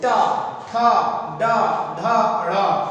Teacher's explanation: इनको बोलते हैं तो मूर्धा से उच्चारित होते हैं, इसीलिए इनको बोला जाता है मूर्धन्य व्यंजन · इन वर्णों को जब आप बोलोगे या उच्चारित करोगे, जो जीभ होती है वो पलट के पीछे जाती है, यानी कि तालु के भी पीछे जाती है, तालु के पीछे का हिस्से को बोलते हैं मूर्धा।